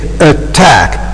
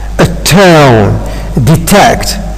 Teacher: So it seems that the syllable just after T is being stressed.